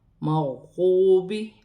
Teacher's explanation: واو ساکن سے پہلے پیش ہے تو واو مدہ بن رہی ہے، اسے ایک الف کی مقدار کھینچ کر پڑھا جائے گا